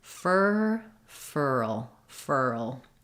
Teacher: just saying fur at first and then sliding forward and lifting the tongue for the L